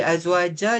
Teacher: Kalau berhenti azwajar jadi mad iwat kena dua harakat.